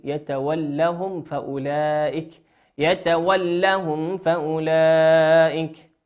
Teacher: ميم ساكنة أتى بعدها حرف الفاء، والفاء من حروف الإظهار